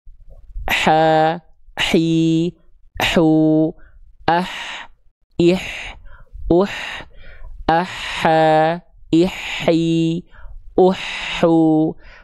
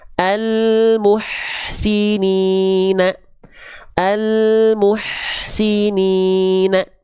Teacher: kalau teman-teman melafalkan ha kecil tepat dari bagian tengah tenggorokan sini, di bagian katup epiglotis ini, dia akan mengalirkan nafas dengan karakter berbisik.